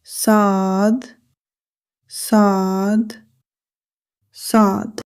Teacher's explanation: The articulation of sad is same area as seen but pronounced heavily. Sound heavy s. The important point to be noted is that the tongue rises slightly. The mouth becomes fuller.